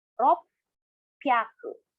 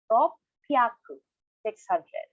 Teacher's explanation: There's a slight pause between rop and pyaku.